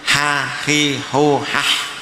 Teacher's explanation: Jadi ha itu makhrajnya di tengah tenggorokan